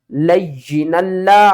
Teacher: آگے دیکھیں لام کو ہم نے اس لام کے ساتھ ملانا ہے، آگے والی الف کو چھوڑ دیں گے اور کیا کریں گے لام لام دو زبر لل، لام کے اوپر سختی کریں گے اور اس لام کو دو مرتبہ پڑھیں گے